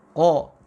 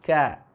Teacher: ketika huruf qaf itu bersifat isti'la, maka huruf kaf lawannya istifal